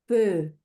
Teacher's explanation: Todo esto se pronuncia, bueno, va a depender de si sigue para consonante, el sonido que cierre es consonante o si es el último sonido. De base es el fonema de boca de O, pronuncia una E.